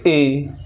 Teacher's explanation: ए कम खुल रहा और आधा बंद भी हो रहा है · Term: अर्ध संवृत